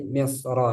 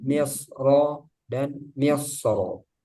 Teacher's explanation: pada kata misri di surah Yusuf dibaca tafkhim karena berkat fathah